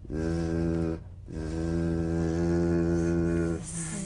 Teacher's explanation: The Z, cognate S, a voiced S sound fricative. The tongue rim should gently touch the upper gum ridge. Z, z. The tip in gentle contact with the hard palate.